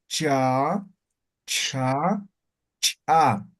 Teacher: la lengua colocamos detrás de los dientes superiores no ve cha no de ahí sale el sonido cha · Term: palatales